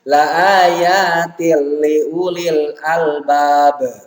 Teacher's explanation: Kemudian yang terakhirnya la ayatil liulil albab itu qalqalah, ya, karena huruf ba dibaca mati atau diwakafkan di akhir bacaan.